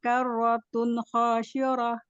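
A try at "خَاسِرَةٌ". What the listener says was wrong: Sin biasa, khasirah, bukan shin tapi sin biasa.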